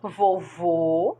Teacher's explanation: Vovô, segundo O, acento circunflexo, som fechado